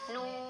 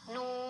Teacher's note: Jangan nune ya, karena nun sukun itu tidak mantul ya. Jangan dibaca mantul, harus hati-hati.